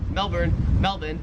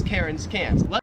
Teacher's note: But then at the same time I'm like, if the actual name of the city, if the actual name is actually Melbourne and the actual name is actually Cairns, it wouldn't matter, because the Australian accent just leaves the R off if it's ever in the last syllable of a word